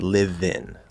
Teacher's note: The V would link to the vowel, live in.